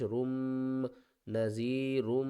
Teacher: را کو ہم نے میم کے ساتھ ملانا ہے اور میم مشدد ہے، غنہ کریں گے